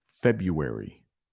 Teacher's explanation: there is an R in the middle, but you don't really pronounce that R.